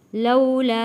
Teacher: یہاں پہ مد ہے اور حروف مدہ بھی ہے، اس لیے یہاں پہ ہم نے لا کو کھینچا ہے۔ واو ساکن سے پہلے زبر ہے، حروف لین ہے۔